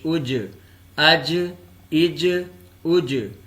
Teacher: یہاں حروف قلقلہ میں سے جیم آ گیا ہے تو جب اس کی ادائیگی کی جائے گی تو اس کے مخرج میں تھوڑی سی جنبش پیدا ہوگی